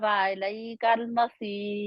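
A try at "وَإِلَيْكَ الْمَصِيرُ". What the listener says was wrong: व इलैकल मसीर व इलैकल मसीर। अलई क्यों है? मुझे तो आ नहीं, आ के ऊपर जबर नहीं नजर आ रही। रा वैसे बारीक रहेगी लेकिन स्वाद को मोटा रखेंगे।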